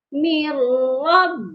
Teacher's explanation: تو یہاں پر بھی وہی کنڈیشن ہے، میم را زیر مر، میم کو ہم نے را کے ساتھ ملا دیا ہے، ادغام کیا ہے، لیکن غنہ نہیں کرنا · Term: ادغام بلا غنہ